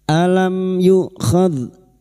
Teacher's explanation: mim sukun bertemu ya idhar safawi, mim sukun dibaca jelas tanpa mendengung